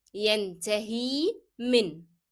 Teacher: However, here, the ya is preceded by a letter carrying kasra. So it will be pronounced as long e.